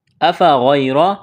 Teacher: أفغير، الف کے اوپر زبر ہے، اس کو حمزہ پڑھیں گے، غین کو موٹا کرنا ہے، یا ساکن ہے اس سے پہلے زبر ہے، یا لین ہے، اس کو کھینچنا نہیں ہے، را کے اوپر زبر ہے، را کو موٹا کرنا ہے۔